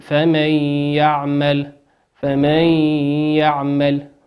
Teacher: نون ساكنة أتى بعدها حرف الياء والياء من حروف الإدغام بغنة يغن بمقدار حركتين